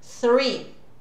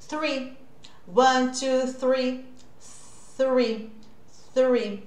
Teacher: A língua continua entre os dentes.